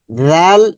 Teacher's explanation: নরম সাউন্ড হবে, জিহ্বার আগা উপরের দাঁতের আগাতে স্পর্শ হবে।